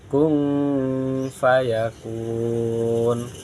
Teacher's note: Nun sukun dibaca samar karena ikhfa. Tanwin dibaca samar karena bertemu huruf ikhfa. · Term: bacaan ikhfa